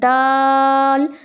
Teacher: जब आप दाल बोलते हैं तो ज़ुबान की आपकी नोक जो है वो ऊपर वाले दांतों की जड़ से लग जाती है जाकर